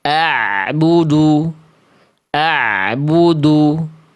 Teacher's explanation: Kalau ain dia mengalir suaranya sedikit. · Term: ain sukun